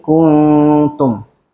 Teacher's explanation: seolah-olah ada nun tapi dia macam nyorok sikit nun tu. Kan kalau nun jelas kita kena baca kuntum. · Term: ikhfa